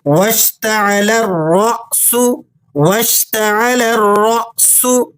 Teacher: اب یہاں بیچ میں جو الف لام ہے اسے سائلنٹ رکھنا ہے اور لام کو ڈائریکٹ را کے ساتھ ملانا ہے کیونکہ را مشدد ہے · لام کو مشدد را سے ملائیں اور پھر را کو اگلے حمزہ کے ساتھ جھٹکے کے ساتھ پڑھیں